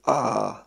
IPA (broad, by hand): a: